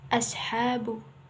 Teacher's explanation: suara tambahan yang keluar dari antara gigi seri atas dan gigi seri bawah dan ujung lidah dan menyerupai suara burung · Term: syofir